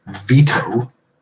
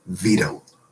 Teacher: you're typically going to pronounce the first word there, veto, with a hard T, but the second with a flap